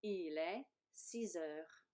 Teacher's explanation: you do this liaison because H is like a vowel.